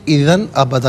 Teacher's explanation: اذن میں غنہ نہیں کریں گے کیونکہ اس کے بعد حرف علقی حمزہ ہے